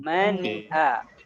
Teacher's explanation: pembacaan nunnya yang pertama tidak ditahan, yang kedua tidak terburu-buru. Jadi pertengahan antara tertahan dan terburu.